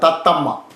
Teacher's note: മൂന്നാമത്തെ മയ്ക്ക് അങ്ങനെ പ്രശ്നങ്ങൾ ഒന്നുമില്ല ഒരു മാത്രം മതി അത് ഉച്ചരിക്കാൻ അതുകൊണ്ട് ആദ്യത്തെ രണ്ടും ഗുരുവും മൂന്നാമത്തേത് ലഘുവാണ്